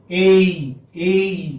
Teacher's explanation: this vowel sound is a glide from front unrounded vowel between half closed and half open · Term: first diphthong